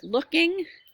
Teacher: you emphasize the verb part